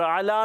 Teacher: ऐन हलक के दरमियान वाले हिस्से से अदा होता है